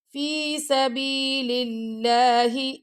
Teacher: اللہ کی لام سے پہلے کسرہ آ گیا یعنی زیر آ گیا تو ہم اللہ کی لام کو باریک پڑھیں گے